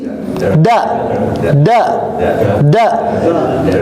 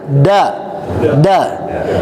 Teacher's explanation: ditempelkan yang kuatnya itu pada gusinya bukan pada gigi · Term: huruf Dal